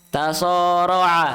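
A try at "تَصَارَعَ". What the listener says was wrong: Perjelas huruf so-nya. So. So.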